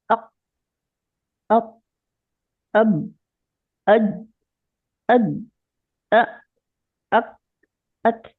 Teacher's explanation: ये सारे हरूफ सख्ती वाले लगते हैं, रुक जाते हैं एकदम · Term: शिद्दा वाले हरूफ